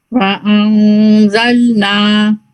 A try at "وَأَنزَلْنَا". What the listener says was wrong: جی لیکن نا بھی لائٹ پہ رکھنا ہے، نو ایسے نہیں، نو ہیوی ہو گیا، نا لائٹ. وَأَنزَلْنَا. اس کو مزید اور تھوڑا سا نا لائٹ پہ رکھ سکتے ہیں انشاءاللہ.